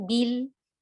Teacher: lam tasdid itu sifatnya bainiyah setengah mengalir